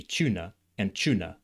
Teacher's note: They don't have the R sound at the end of the syllable. And at the end of the word here. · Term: non-rhotic